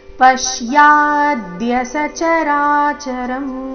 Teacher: ಪ ಮತ್ತೆ ಯ ಮೇಲೆ ಆಘಾತ